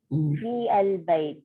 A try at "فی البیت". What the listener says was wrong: Sister اس کو فی البیت نہیں پڑھیں گے, اس کو ملا کے پڑھنا ہے. فی البیت مرکب بن گیا نا.